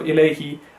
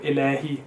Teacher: you have to make sure that you go from a to e and a to u, rather than just mixing it into one sound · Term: huruf leen